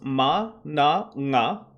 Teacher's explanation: we have nasal consonants ma na na for bilabial alveolar and velar